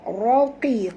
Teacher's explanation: Qi di sini tebal. Kerana huruf qaf walaupun baris bawah kena baca tebal. Kerana huruf qaf ini dia punya sifat isti'la.